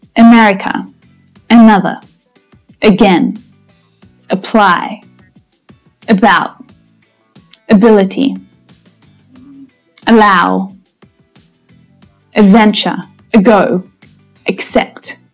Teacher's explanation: The first syllable is unstressed. Now, these words all start with the schwa sound.